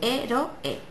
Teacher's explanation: las vocales se pronuncian en distintas sílabas y se produce el dip el iato vale por ejemplo en